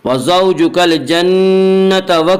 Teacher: نون مشدد غنہ ہوگا، غنہ کی مقدار 1 الف ہے